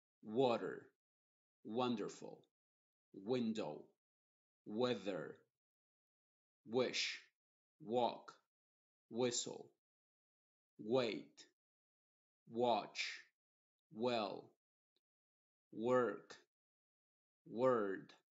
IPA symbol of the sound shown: w